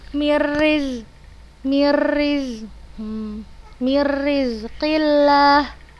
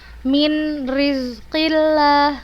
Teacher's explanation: kita hilangkan nun sukun ini langsung kita baca ke huruf ro yang bertasydid nya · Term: idgham